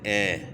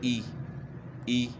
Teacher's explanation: جس طرح انگلش کا جو ہے نا حرف ہے اے بی سی نا، اے پڑھتے ہیں حمزہ زیر اے. تو یہ اے جو ہے نا یہ مجہول آواز ہے، اس سے بچنا ہے. یعنی اے نہ ہو.